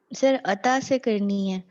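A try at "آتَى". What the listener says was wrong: عطا نہیں ہے آتا نہیں ہے آتا الف پہ کھڑی زبر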